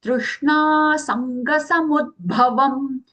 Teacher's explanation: So Sanga, Ang sound as Aghatansa and ang and ga coming together as the joint consonant